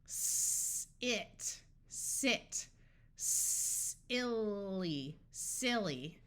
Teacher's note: if you put your hand on your throat while you do the sound, S, you won't feel your vocal cords vibrate. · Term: unvoiced sound